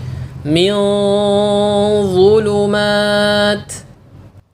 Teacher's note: pada nun sukun yang disamarkan atau yang diikhfakan Contohnya seperti ini gunahnya lebih lama dibandingkan gunah pada nun sukun yang dibaca jelas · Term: gunah yang sempurna